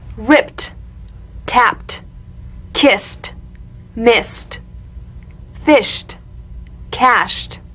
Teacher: ED endings that are really pronounced as T. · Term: unvoiced group